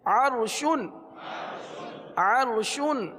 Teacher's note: را ساکن سے پہلے زبر ہے اس لیے را کو پر پڑھیں گے